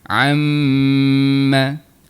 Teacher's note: dengung untuk huruf mim dan huruf nun yang bersabdu, dia keluarnya di bahagian rongga hidung kita.